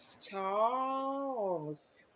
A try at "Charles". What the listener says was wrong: Charles. So I want you to practice that to make the L clearer.